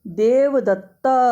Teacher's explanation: जब प्लुत उच्चारण करना होगा तो हम इसको प्लुत उच्चारण में 3 मात्रा तक इसे बोलेंगे, देवदत्त। तो यहाँ पर हम अ पे स्ट्रेस देंगे।